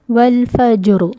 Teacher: اب وقف کے رولز کے اکارڈنگ ہم اس کسرہ کو ہٹا دیں گے اور اس کو کر دیں گے ساکن، را ساکن ہو گیا، اس سے پہلے بھی ساکن ہے اور اس سے پہلے فتح ہے، تو اس فتح کی وجہ سے اس را کو موٹا پڑھا جائے گا